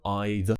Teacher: make sure that you're removing the R from the end